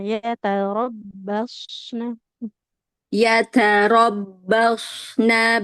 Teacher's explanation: dia shad itu punya sifat shofir ya, bunyi desis.